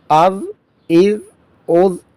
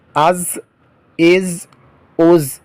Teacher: زال نرمی کے ساتھ ادا ہوگا اور زا زبان کی سختی کے ساتھ